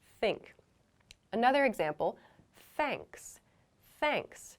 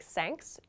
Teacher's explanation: this is a word I often hear students make an S sound instead like thanks not correct so make sure you use your tongue